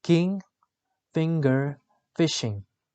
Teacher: The description of ng is voiced velar nasal.